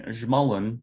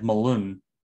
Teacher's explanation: So zhmalun bears stress on the first syllable, and the malun, very similar word, bears stress on the second.